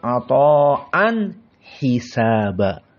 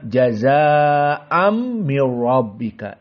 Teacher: an tanwin bertemu dengan ha, huruful halq. Berarti apa? Tidak ada idgham, harus idhar.